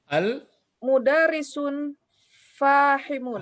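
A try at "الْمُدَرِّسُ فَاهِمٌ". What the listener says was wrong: Nah, jangan sampai berbunyi sun, karena dilarang pakai tanwin. Iya, al-mudarrisu fahimun.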